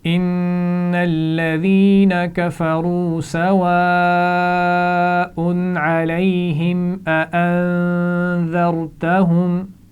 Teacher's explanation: پہلے نون پر شد ہے، یہاں پر غنہ ہوگا. اانذرتہم، یہاں پر بھی نون ساکن پر غنہ ہوگا.